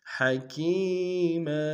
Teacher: علیما حکیما، حق گہرائی سے ادا کریں گے، کاف یا مدہ ایک جانب میں کھینچیں گے، میم کے تنوین غنہ کریں گے، وقف میں میم کو الف سے بدل دیں گے